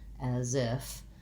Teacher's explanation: It's not unstressed, it's actually stressed. In as if, we tend to stress the if, so the as is shorter, as if. But that Z, because it links the two, is almost part of the stress syllable.